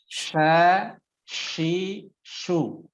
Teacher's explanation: ketika diucapkan bukan sa tapi sha ya, bergemuruhnya angin di dalam mulut. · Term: huruf shin